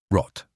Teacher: R, not an English r. It comes from the back of the throat, almost like a soft gargle.